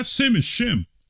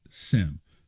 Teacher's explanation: Greeks don't have the sh sound right okay so quite naturally they wouldn't pronounce it shim